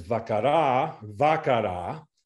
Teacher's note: the final A is held fully